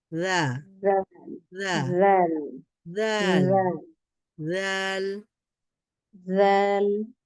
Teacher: তাহলে জিহ্বার অগ্রভাগ সামনের দাঁতের যেই অগ্রভাগ আছে সেখানে একটু লাগান সামনের দুই দাঁতের অগ্রভাগের সাথে জিহ্বার অগ্রভাগটা একটু লাগিয়ে সাউন্ডটাকে একটু বের করেন